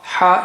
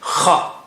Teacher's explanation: Ha is soft, kha, strong airflow.